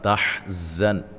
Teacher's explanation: تحزن زا کو سیٹی سے